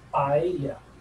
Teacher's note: when they say para ella, they drop the la and it just becomes paella